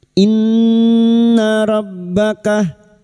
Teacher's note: nun yang bertasdid gunna musyaddadah kita dengungkan selama 3 harokat. Inna rabbaka masuk pada huruf ba yang bertasdid.